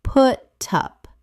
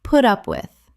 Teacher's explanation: The T in put links to the U in up. It sounds like put up.